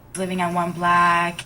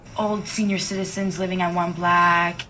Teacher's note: This person is saying the word block the way they say black.